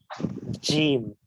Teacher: একই রকম যাতে না শোনা যায়, এই জন্য এদের সিফাতে বা উচ্চারণের পদ্ধতিতে একটু পার্থক্য করতে হবে। জিমের মাখরাজ হচ্ছে জিহ্বার মধ্যভাগ, তার বরাবর উপরের তালুর সাথে লাগিয়ে জিম, এটা শক্ত এবং একটু মজবুত ভাবে আওয়াজ হবে।